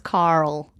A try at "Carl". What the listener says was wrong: I know that we've talked about before that you say Carl instead of Carl. It has an R. It's Carl. No, you say Carl.